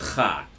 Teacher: basically just a T and Ch together